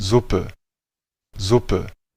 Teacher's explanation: está combinando una S vibrante con un sonido de epsilon al final